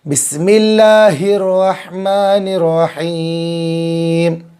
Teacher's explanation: دو جگہ بڑا ہا ہے، اس کو اچھے سے نکالیں گے گلے کے بیچ والے حصے سے۔ ایک جگہ چھوٹا ہا ہے، اس کو جو ہے حلق کے نیچے والے حصے سے۔